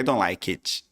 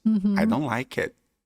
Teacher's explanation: A gente vai falar o T, mas a gente não chega a falar.